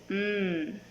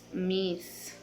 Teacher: Characteristic bilabial nasal voiced.